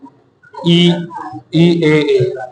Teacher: अग्रस्वर जिन उच्चारण में जीवा का अग्रभाग ऊपर आता है